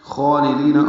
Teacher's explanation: خالدین خا پر پڑھیں گے، لام باریک ہے، لام کو جلدی سے پڑھیں گے. دی آئے مدہ ہے، 2 حرکات لمبا کریں گے